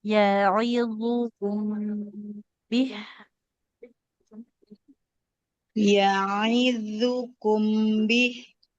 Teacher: Jangan ditekan zo-nya karena tidak bertasydid.